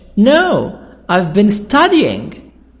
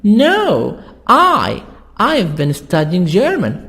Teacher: so here we stress in the answer on the opposite not my brother but i not teaching but studying